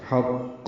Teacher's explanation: اور اس پہ وقف جب کر رہے ہیں ہم تو دونوں پیشیں ختم ہو گئیں تو قلقلہ ہوگا. قاف ساکن پہ قلقلہ ہوتا ہے، وقفاً قلقلہ ہے